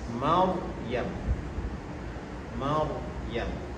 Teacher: yunzarun ro dia baris hadapan ru keadaan yang ketiga ra sukun ra yang mati sebelumnya berbaris fathah berbaris di atas Jadi dia terpengaruh dengan ra terpengaruh dengan baris atas huruf sebelumnya. Jadi bunyi ra yang mati tersebut juga berbunyi tafkhim tebal kerana sebelumnya berbaris di atas.